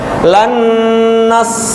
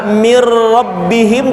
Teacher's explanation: karena dengar barusan idgham Kamil itu leburnya huruf mim Nun ya leburnya huruf ke huruf berikutnya secara Kamil sempurna contohnya masuk sempurna ke berikutnya lannas leburnya sempurna mirrobbihim juga sempurna